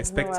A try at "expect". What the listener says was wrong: é tipo espectador, né? Só expect.